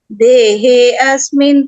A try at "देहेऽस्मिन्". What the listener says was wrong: मैंने बोला अवग्रह को नहीं प्रोनाउंस करना है, देहेस्मिन् होगा, देहे अस्मिन् नहीं।